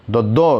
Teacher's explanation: द तो देखिएगा जी जो है दांत में सट जाता है, इसलिए दंत हो जाएगा।